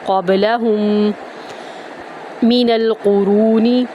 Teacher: دوسرے والے میم میں داخل کرتے ہوئے غنہ کریں گے